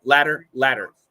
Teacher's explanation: your tongue touches once to give us that almost a D sound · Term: flap T